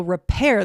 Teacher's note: repair, the stress is on the second part of the word